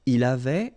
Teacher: final T not pronounced